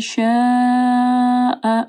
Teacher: شاء مد ہے، اس کے بعد حمزہ ہے، 4 سے 5 حرکات کے برابر اس کو لمبا کرنا ہے